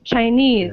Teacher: The second syllable is stressed.